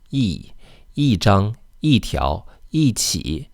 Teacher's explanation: when followed by a measured word, E is usually pronounced the fourth tone, E, 一 张, 一 条, 一 起, except for when it's before a character in the fourth tone.